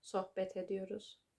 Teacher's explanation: And because a t sound, an unvoiced consonant, a so-called harsh consonant, is followed by a vowel, we need to make it soft to make it easy to pronounce. Therefore, the T turns into a D sound.